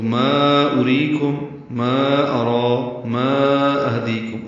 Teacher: چھوٹی مد منفصل ہے کیونکہ الف مدہ کے بعد دوسری کلمے میں حمزہ ہے